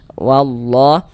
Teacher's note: Jadi lafaz Allah dibaca panjang, madu tabi'i panjangnya 2 harokat.